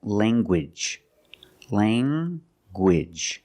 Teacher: You have the nasal sound, lang, and the hard g.